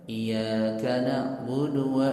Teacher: dia bacanya nggak ada tasydid pada ya-nya